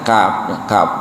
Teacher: jadi kaf dari pangkal lidah. Jadi lidahnya di sini kita merasakan ya, kaf gitu.